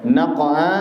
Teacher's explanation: Qalqalah Sugra qofnya dipantulkan dengan pantulan yang kecil